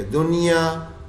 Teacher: اب دیکھیں نون ساکن آیا اس کے بعد یا تو یرملون کا لفظ ہے دنیا میں، لیکن اس میں غنہ نہیں کرتے، دنیا یوں کر کے نہیں پڑھتے، یا اس کو بالکل ویسے ہی پڑھتے ہیں جیسے اظہار پڑھ لیتے ہیں نا، ایسے کر کے دنیا، نہ غنہ کرتے ہیں، نون بھی ظاہر کر دیتے ہیں، مرج والا کام بھی نہیں کرتے